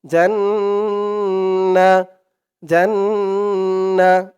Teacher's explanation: জান্না এক আলিফ পরিমাণ গুন্না করতে হয় ওয়াজিব গুন্না